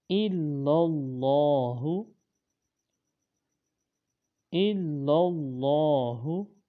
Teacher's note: جو لام ہے وہ اللہ تعالیٰ کے لام سے مل رہی ہے۔ اللہ تعالیٰ کے لام کو موٹا پڑھیں گے۔